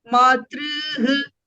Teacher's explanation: It is there in the dvitiya bahuvachana form, the dirgha r and then followed by the visarga